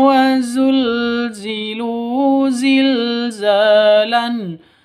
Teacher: Za panjang dua ketukan karena ada alif diawali dengan fathah atau alif sebelumnya fathah, mad asli atau mad tabi'i.